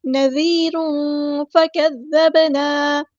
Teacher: نذیر فکذبنا، ذال ہمارا باریک لائٹ لیٹر ہے، یا مد آ گیا تو مد اصلی کریں گے، ذال کو نرمی سے ادا کرنا ہے، تنوین کی آواز کو چھپا دینا ہے، یہاں پر اخفا ہوگا